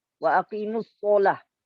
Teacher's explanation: Bercampur suara fathah sad dengan dhammah sad.